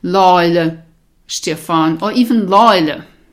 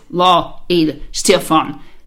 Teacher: so what you really have is law Eila Stefan and then because you have two vowels the a and the e coming together you can run them together